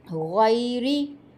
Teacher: غین گلے کے اوپر والے حصے سے ادا ہوگی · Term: ادنی حلق